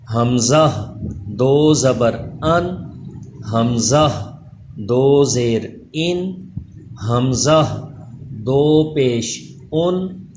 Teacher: ہا، دو زبر ہن، ہا، دو زیر ہن، ہا، دو پیش ہن، ہن، ہن، ہن۔ حمزہ، حمزہ بھی ہا کے مخرج سے حلق کے نیچے والے حصے سے ادا ہوتا ہے۔ حمزہ، دو زبر ان، حمزہ، دو زیر ان، حمزہ، دو پیش ان، ان، ان۔